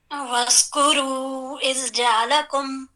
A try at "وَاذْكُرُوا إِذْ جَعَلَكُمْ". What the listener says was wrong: اور وَذْ یعنی اس میں وز ایسی آواز نہ ہے ذا کی. وَاذْكُرُوا إِذْ جَعَلَكُمْ